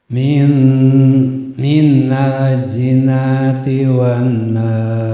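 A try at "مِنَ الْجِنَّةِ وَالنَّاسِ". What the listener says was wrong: Ditahan nunnya minal jin.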